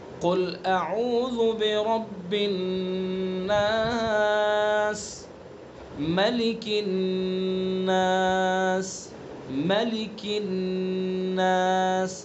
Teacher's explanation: ناس کا جو نون ہے یہ چونکہ مشدد ہے اس لیے اس کے اندر غنہ کریں گے